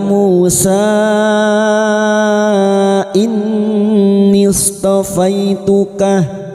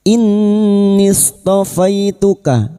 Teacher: nun yang bertasdid gunnah musyaddadah kita dengungkan selama 3 harokat